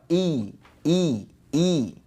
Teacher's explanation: Nah seolah-olah ada huruf ya ya jadi lidah tengahnya memang terangkat i i i jangan ngirung I tapi I gitu ya Nah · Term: kasrah